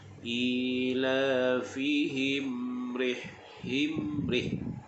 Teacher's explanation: mim yang di atasnya ada sukun, hukumnya izhar syafawi. Kita rapatkan bibir.